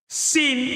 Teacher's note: kalau kita ucapkan sin, itu lidahnya datar